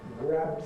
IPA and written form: græb (grab)